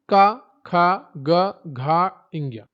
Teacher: क वर्ग पूरा आता है कंठ में